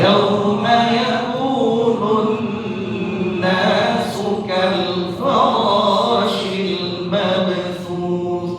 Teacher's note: kata-kata yauma yakunu ini jangan sampai dibaca lebih dari 2 harokat. Ya, cukup 2 harokat, jangan sampai yauma yakunun nasu.